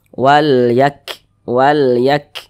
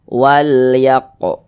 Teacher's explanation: Huruf kaf dia bukan termasuk huruf qalqalah, bukan. Nah, jadi nafas kita alirkan ya, karena dia memiliki sifat hamas.